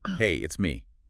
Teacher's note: the pitch isn't flat. It goes up slightly on, Hey, and then it comes down at the end on me. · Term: Intonation